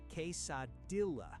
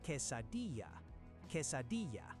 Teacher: Most English speakers say "case-a-dilla." This is wrong. The double L in Mexican Spanish is never a hard L sound. It sounds like a Y.